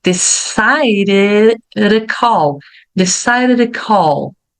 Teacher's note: porque o som de D e de T pode virar um R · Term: Rzinho fraco